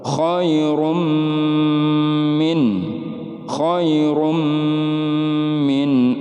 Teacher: cara membacanya dengung dan ditahan 3-4 harokat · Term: Idgham Bighunnah